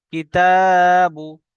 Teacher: তাড়াতাড়ি পড়তে হবে, এক আলিফ তাড়াতাড়ি পড়তে হবে, একটু টান হবে না। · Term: হারাকাত